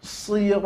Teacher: Seraya menebalkan huruf to dan berikan pula sifat huruf lam, huruf istifal, huruf tipis. Kemudian berikan pula sifat lam itu inhiraf, palingkan tadi lidahnya. Maka setelah to tebal, lamnya senyumkan.